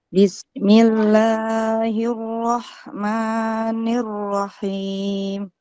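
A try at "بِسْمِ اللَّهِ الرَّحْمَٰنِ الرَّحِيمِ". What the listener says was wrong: Kepanjangan Ibu. Bismillahirrahmanirrahim.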